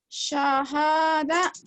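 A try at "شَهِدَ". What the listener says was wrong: Shin. Syaha. Bukan sohada. Sya. Syahada.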